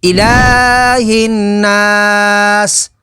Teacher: وقف تام کی وجہ سے سین کو ساکن کر دیں گے، حروف مدہ کے بعد عارضی سکون تو مد عارض ہوگی